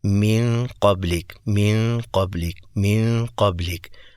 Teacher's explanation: جب زبان نون کے مخرج کے اوپر ٹکرا چکی ہے تو اس کی اواز خود بخود ناک سے انی ہی انی ہے اپ نے جان بوجھ کر ناک سے اواز نہیں نکالنی کہ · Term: اخفا